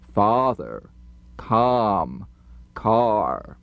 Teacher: The lip opening is too small. We need to pronounce our number five vowels with much larger openings for a big round ah sound.